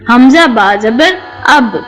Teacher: جب دونوں ہونٹوں کا اندرونی گیلا یا تر حصہ آپس میں مضبوطی سے ملتا ہے تو با ادا ہوتا ہے